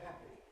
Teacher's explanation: Ha, ha, voicing comes on. Voicing switches off again, the consonant, ha, and then switches on again for the final vowel, happy. So the voicing is off, on, off, on. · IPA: [ˈhæpi]